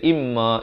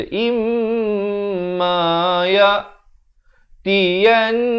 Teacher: wajibul gunnah, wajib dengung, kadar panjang 2 harakat.